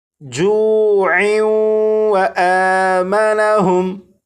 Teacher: اگر اس لفظ پر وقف نہ کرنا ہو بلکہ اس لفظ کو آگے اس لفظ کے ساتھ ملا کر پڑھنا ہو تو پھر یہاں پر تنوین اور تنوین کے بعد واو حروف یرملون میں سے ہونے کی وجہ سے یہاں پر ادغام ہوگا، اور پھر اسے اس طرح پڑھیں گے جوع و آمنہم۔